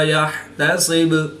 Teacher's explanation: وقف کی حالت میں با کی پیش کو ساکن کر دیں گے تو یہاں پر قلقلہ صغریٰ کر کے پڑھیں گے